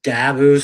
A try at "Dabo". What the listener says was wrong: I like how you say his name, Dabu. It's Dabo. You go Dabu.